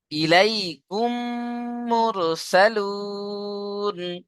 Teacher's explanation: মিম সাকিনকে মিমের সাথে মিলিয়ে এক আলিফ গুণা করে পড়তে হবে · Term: ঈদগামে শাফাবি